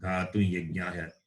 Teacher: this anuswara is replaced by the nasalized yakara